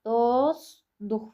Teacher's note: Yəni burda sözün kökündəki t düşəcək. L D əvəzlənməsi baş verəcək. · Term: düşmə